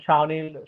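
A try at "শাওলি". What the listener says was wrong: Shaoli. No, it's Shaoli. The N is silent. So the N is for the Chandrabindu. Shaoli.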